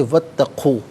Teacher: وا اتقو اللہ، واو پر زبر ہے، اس سے اتقو کی تا کے ساتھ ملائیں گے، درمیان میں سے الف یعنی حمزہ کو حذف کیا جائے گا، اسے ہم پڑھیں گے واتقو